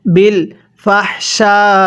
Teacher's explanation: বিল ফাহশা, চার আলিফ টান দিব